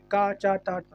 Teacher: इसको बोलोगे तो बहुत कम वायु निकलती है, प्राणवायु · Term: अल्प प्राण